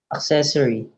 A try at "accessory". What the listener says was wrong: Use an American A. Ack. Ack, not uck. Accessory. Smile. Smile. Ah.